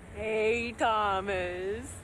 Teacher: the stress syllable starts lower rather than higher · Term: intonation and pitch